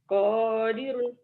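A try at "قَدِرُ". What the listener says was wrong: enggak ada runnya dulu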